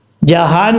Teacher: ہا بھاری ساؤنڈ کے ساتھ پڑھیں گے، اس ہا کا تعلق سینے کی طرف ہے